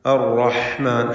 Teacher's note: عند الرحمن عهدا الرحمن റായിന് തഫ്ഖീം കൊടുക്കണം തടിപ്പിച്ച് റായിനെ ഉച്ചരിക്കുക الرحمن ഹാ വ്യക്തമാക്കി തൊണ്ടയിൽ നിന്ന് അതിൻ്റെ മഖ്റജിൽ നിന്ന് ഉച്ചരിക്കുക